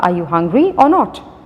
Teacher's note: हमने इसको बहुत जल्दी से रीड आउट किया, बहुत जल्दी से प्रोनाउंस किया, इस पे स्ट्रेस नहीं किया इस वर्ड और पे, इसलिए इसको वीक फॉर्म ऑफ कंजंक्शंस कहेंगे. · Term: weak form